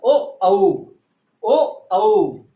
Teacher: कंठ प्लस ओष्ठ, कंठ प्लस ओष्ठ, कंठ गला और वह ओष्ठ